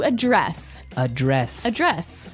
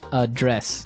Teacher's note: but you pronounce it differently the verb address has the stre the stress on the second syllable